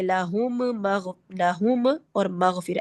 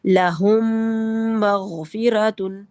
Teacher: بلکہ ان دونوں کا ادغام ہو جائے گا اور یہ ایک میم مشدد کی طرح ادا ہوگا ، لہم مغفرۃ، ٹھیک ہے، 2 کاؤنٹ کا غنہ۔ اب اخفاء